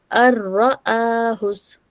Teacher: نون ساکن کے بعد را لیٹر آ رہا ہے تو ہم نون کو ڈراپ کر دیں گے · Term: ادغام